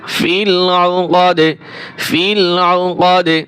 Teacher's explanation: অক্ফ করলে এখানে এই যে জের আছে, জের সাকিন হয়ে যাবে, আর দাল থাকার কারণে কলকলা হবে